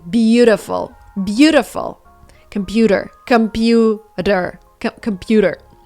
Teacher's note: when you have t in the middle of a word it actually needs to be pronounced as d